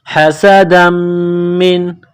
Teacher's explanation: میم مشدد ہے تو غنہ کریں گے، آواز ناک میں چھپائیں گے